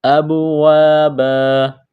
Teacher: دو زبر کی تنوین کو وقف میں الف سے تبدیل کریں گے